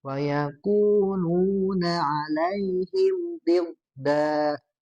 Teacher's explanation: do-nya ditebalkan ya karena huruf isti'la